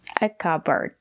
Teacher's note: The letter D is a stop D. Put your tongue up and stop the air.